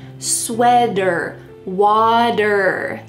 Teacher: a t between two vowels, we often change that t to a d sound